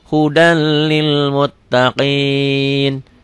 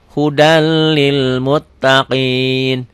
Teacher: ditulisnya ada n-nya dibacanya n-nya hilang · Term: idgham tanpa dengung